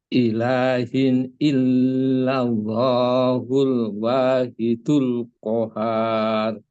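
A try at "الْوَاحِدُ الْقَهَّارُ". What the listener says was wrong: Kohar, kurang Pak tekannya. Al-wahidul kohar.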